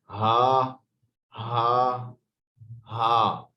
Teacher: हा भी हमजा वाली जगह से अदा होगा, थ्रॉट से, गले के सबसे निचले हिस्से से।